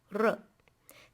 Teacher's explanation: So the first one is a short R, where you roll your tongue and touch the top of your palate